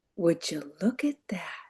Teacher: And I like to say it kind of breathy. I like to channel my inner Marilyn Monroe when I say it.